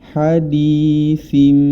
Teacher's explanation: maka hukum bacaannya adalah iqlab yakni dirubah menjadi mim disertai dengan gunah